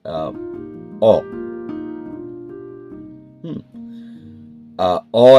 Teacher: অ বলতে জিহভা কিন্তু একদম নিচে নামছে না। ঠিক নিচের একটু উপরে থাকছে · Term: নিম্নমধ্য স্বরধ্বনি